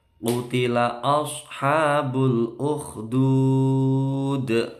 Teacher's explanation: Qutila, qafnya tebal. Ashabu, shotnya mencucu.